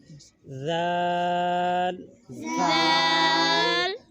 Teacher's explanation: دونوں دانتوں کے درمیان، یعنی اوپر والے دانت اور جو نیچے والے دانت ہیں ان کے درمیان میں زبان کو لے کر باہر نکالنا ہے